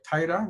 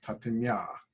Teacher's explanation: they're actually flipping the two vowels around. In taira, you have this diphthong of let's talk in terms of letters, the A and I, right, which together make the sound I.